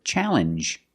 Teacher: makes the same sound the regular n plus the J sound